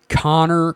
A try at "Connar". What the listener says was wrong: Connar, not Connor. AR.